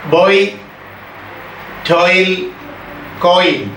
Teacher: ഓയും ഈയും കൂടെ ചേരുന്ന ആദ്യസ്വരം അല്ലെങ്കിൽ ആ സ്വരസങ്കരം